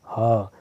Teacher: लेकिन हा को बोलिए आप हा, तो आपके कंठ का 100% यूज हो रहा है, इसलिए ये क्या है, सघोष है। तो आप ध्यान रखेंगे तीनों सा अघोष हैं और हा क्या है, सघोष है।